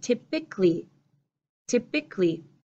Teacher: it looks like it should have four pieces typically but I'm shortening it I'm tightening it in my mouth